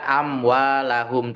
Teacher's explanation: Bacaannya adalah jelas dan tidak didengungkan. Tidak dengung berlebih dalam artian ya mim itu memang secara alamiah itu bersifat ghunah atau makhrajnya itu alkhaisyum am gitu saja itu sudah masuk ke hidung. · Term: izhar syafawi